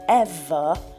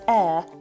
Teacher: if you take the V out of ever it becomes air which you can get away with it being one syllable